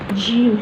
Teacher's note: زبان کا وسط اوپر تالو کو لگے تو جیم ادا ہوتا ہے۔ جیم کی صفت شدت ہے اور سختی، اور اس میں سے وسط کا زیادہ حصہ نہیں لگتا، اوپر کو تھوڑا سا حصہ لگتا ہے۔